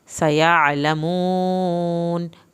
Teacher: कल्ला वही अलिफ लंबा, लाम की शद, सयअलमून। सीन को सीटी की आवाज़ के साथ पढ़ के आइन की आवाज़ निकालनी है। सयअलमून, वाव को आपने खींच के पढ़ना है।